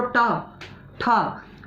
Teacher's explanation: आपकी जो जीभ है वो कहाँ पर आके लग रही है? मुंह के ऊपर के आगे वाले भाग पर लग रही है। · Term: मूर्धन्य